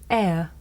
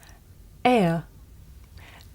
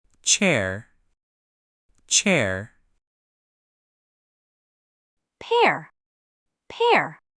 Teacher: This is a diff thong, a double vowel sound. The shape the mouth makes changes from the beginning of the sound to the end. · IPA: /eə/